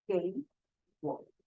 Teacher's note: In two words with the third tone at the same time, you need to change the first word into second tone, and the second word is maintained as the third tone.